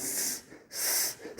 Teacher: 입에 작은 틈으로 소리가 나오는 소리 스 했을 때 소리가 작게 나오죠. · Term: 마찰음